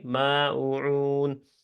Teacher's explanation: میم فتح کے بعد زبر کے بعد الف ہے تو 2 حرکت لمبا کر کے ماعون